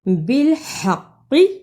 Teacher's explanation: بالحق کی ہا کو حلق سے رگڑ کے نکالا